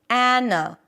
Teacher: the first syllable is actually the as in cat, and then you have a schwa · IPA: ˈænəlaɪz